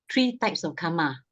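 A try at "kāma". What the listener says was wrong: Not karmas. K long A M A.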